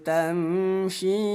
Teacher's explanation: Mad jaiz munfasil. Cara bacanya bunyi shi yang ada benderanya kita panjangkan selama 5 harokat.